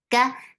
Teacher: The sound is short when you are saying fatha. Ka, there is no hums in kaf. Kaf is light for fatha open your jaws. The sound is short.